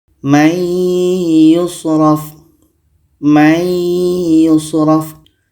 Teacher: ada nun mati bertemu ya ya adalah huruf idgham bunah maka nun mati ini kita masukkan ke ya dan kita dengungkan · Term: idgham bi gunnah